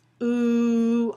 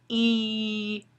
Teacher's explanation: lengthening the vocal tract and the pitch is a little lower